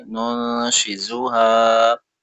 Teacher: نون پیش نون، شین زیر شی، نون شی، زا پیش زو، نون شی زو، ہا الف زبر ہا، نون شیزوہا، اخفا ہے اور لاسٹ میں الف مدہ ہے، کھینچیں گے